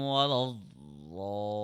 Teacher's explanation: Zaw will be stretched for 4 seconds because of the big mud. After that, the Zaw will be, there will be a transition between Zod and then Lam.